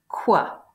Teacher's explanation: something produced in the back of the mouth with the tongue up against the soft palate, that's the velar part, with rounding of the lips, that's the labio part. And the treatment of these labiovelars in Latin and Greek has given rise to some surprising, not immediately obvious, cognates.